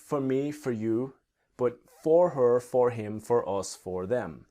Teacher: if you remember that for her the H will disappear speaking quickly